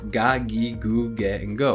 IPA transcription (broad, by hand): ga gi gu ge go